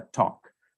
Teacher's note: if I were to say the same sound with an Indian English variety, then I would move the tongues further behind, and then it would not necessarily be a talk, it would be a talk.